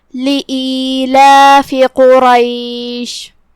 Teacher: کلمت لإیلاف میں یہاں الف کے نیچے زیر ہے، لہذا ہم حمزہ کو نیچے سے ادا کریں گے. حمزہ کی ادائیگی حلق کے نیچے والے حصے سے ہے، تو ہم حمزہ کو وہیں سے پڑھیں گے.